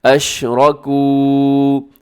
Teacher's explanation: اس میں را موٹا پڑا جائے گا، لمبا اسے کیجیے گا، کاف کو کیونکہ کاف کے بعد واو ہے، واو مدہ ہے